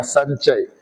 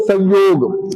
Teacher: जब म का योग क वर्ग से प वर्ग तक होने पर म अनुस्वार में बदल जाता है।